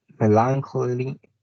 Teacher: The stress is placed at the beginning, like in alligator.